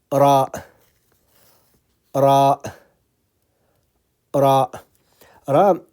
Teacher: I'm using the tip of the tongue, but is touching the gum of the upper front teeth. Remember, the tip of the gum is touching the gum of the upper front teeth.